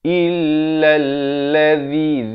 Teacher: zi di hujung lidah